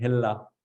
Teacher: if your tongue goes up, it becomes an L sound, hella. It should be down right, hedder.